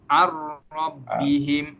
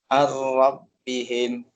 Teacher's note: kita masukkan huruf nun tersebut ke dalam huruf ra, tapi kita tak dengungkan dia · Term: idgham bila gunnah